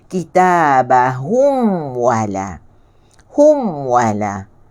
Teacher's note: Sedangkan dia adalah tawassut. Tawassut ni mesti bunyi meloncor juga sikit.